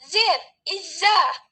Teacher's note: lalu tempat artikulasinya di alveolar er era teluguone MZ penafsir itu fricative atau geseran dan tempat artikulasinya di alveolar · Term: frikatif atau geseran